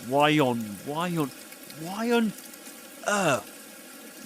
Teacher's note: With a y sound, he connects the word why to the word on.